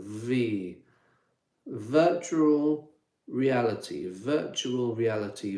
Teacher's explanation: V V, you can hear it. You can feel it in your throat there. Vibrating.